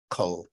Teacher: the K is from the back of the throat